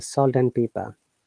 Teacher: But when you're pronouncing quickly, the and becomes an, salt and pepper. You don't pronounce d at all.